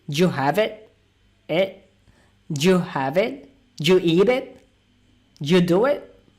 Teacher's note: the emphasis or the stress is only on the main word, which is the main verb, have, eat,